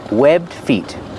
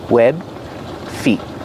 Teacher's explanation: You don't really hear the D if you link the sounds together because it's a stop D.